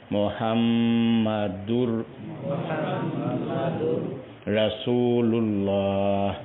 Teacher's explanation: دوسری بات جس کا خیال رکھنا ہے، میم پہ شد ہے، جہاں بھی میم پہ شد ہو درمیانی مقدار میں آواز ناک سے ادا کریں گے۔ اور تیسری بات یہ ہے اس کو دور نہیں پڑھیں گے، دونوں ہونٹ پوری طرح گول کر کے دور پڑھیں گے، دونوں ہونٹ پوری طرح گول فرمائیں گے۔ · ہا جو ہے یہ جیم کی شکل والی ہا ہے، اس کو حلق کے درمیان سے ادا کریں گے